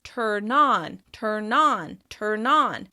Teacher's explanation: In verb form, turn on will sound like tur-non. The N will join to the vowel sound that follows it, and that will become really clear and easy to hear because of the stress. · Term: linking